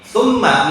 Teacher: Summa, mimnya di tasdid.